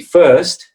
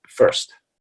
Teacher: If it's British English, it would be and it would actually be an ST, because in British English, they don't pronounce the R in these cases. They only pronounce the R when it's the beginning of a word, or before, let's say before a vowel, right?